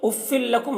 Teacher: تو تنوین کو لام سے ملا کر پڑھیں گے, غنہ نہیں کریں گے, ادغام تام ہو رہا ہے.